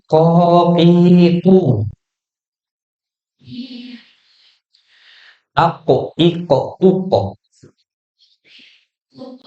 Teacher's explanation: huruf kof lebih mundur lagi dari kaf